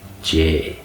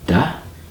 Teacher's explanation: Da is broad, da. And then the J is slender, because it is closer to the palate of the mouth